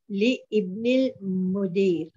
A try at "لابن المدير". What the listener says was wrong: لابن المدير. Alif is not pronounced. لابن ال.